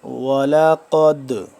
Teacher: وَلَقَدْ قاف دال زبر قد، قاف دیکھ لیں، قاف کو موٹا پر پڑھیں گے، اور لفظ دال ہے تو دال اور ساکن ہو رہا ہے تو اس کو ہم قلقلہ کریں گے